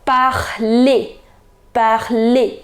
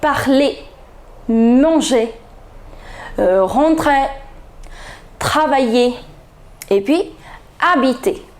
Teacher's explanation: in all the first group verbs where you have ER endings, you never pronounce the last consonant R.